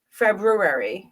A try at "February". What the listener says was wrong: Right, but A-R-Y. the way you said it made it sound like you had an R-A-R-Y. That's why I was like, Extra R in there.